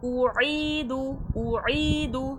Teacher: عین کا مخرج ہوتا ہے وسط الحلق۔ اعیدو، عی میں ہو رہا ہے یا مدہ، یا ساکن سے پہلے زیر کھینچ کے پڑھا جائے گا۔